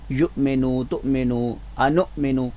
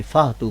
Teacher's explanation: حمزہ کی بجائے ہا کی آواز نہیں آنی چاہیے